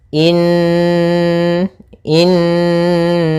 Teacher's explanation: suara nunnya dimasukkan ke rongga hidung kita karena dia gunah